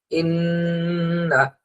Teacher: নুন অথবা মিম এখানে যদি তাসদিদ থাকে তাহলে এখানে গুন্না হবে